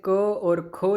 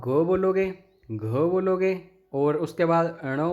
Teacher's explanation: जैसे क और ख जब आप बोलेंगे तो आपकी तंत्रिका कुछ भी नहीं, इतना ज़्यादा रिएक्शन नहीं करेगी। जब आप ग बोलोगे, घ बोलोगे और उसके बाद ण बोलोगे तो आपकी तंत्रिका अंदर से काफ़ी कंपन करेगी